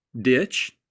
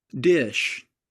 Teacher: make sure that you don't stop the air before making the sh sound because that's exactly how the CH sound is made